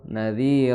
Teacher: za di ujung lidah bertemu dengan ujung gigi seri atas